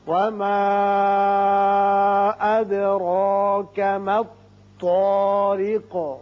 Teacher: وما اس کے اوپر مد ہے چھوٹا مد منفصل، 3 الف کے برابر آپ کھینچیے، دال ساکن ہے، یہاں صفت قلقلہ ادا کریں گے، اور را کے اوپر کھڑا زبر ہے، یہ پر پڑیں گے۔